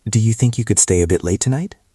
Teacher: And notice the intonation. It goes up at the end gently. You don't want to sound flat.